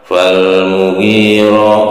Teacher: Juga karena ro berharokat fathah, ada hukum bacaannya itu tafhim, ditebalkan ya.